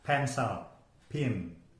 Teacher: Jadi tempatnya itu di bilabial, kemudian caranya itu diletupkan. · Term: plosive